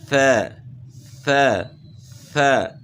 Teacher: ث ث، نیچے دانتوں کے ساتھ زبان ٹچ نہیں ہوگی، صرف سامنے والے اوپر کے دو دانت یعنی ثنایا علیا کے اندرونی کناروں کے ساتھ زبان کی نوک لگے گی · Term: ثا